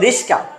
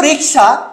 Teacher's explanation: দন্তস্বর আগে চলে আসছে, কটা পরে চলে গেছে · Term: বিপর্যয়